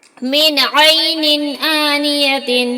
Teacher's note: یہاں نون ساکن کے بعد عین حروف حلقی کے 6 حرفوں میں سے ہے، اس لیے نون کو ظاہر کر کے بلا غنہ کے جلدی پڑھیں گے. یہاں دو زیر کی تنوین کے بعد حروف حلقی کے 6 حرفوں میں سے حمزہ آیا ہے، اس لیے تنوین کو ظاہر کر کے بلا غنہ کے جلدی پڑھیں گے